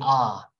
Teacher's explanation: ah is a low vowel and it's a front vowel all right that means your tongue goes down and it comes up front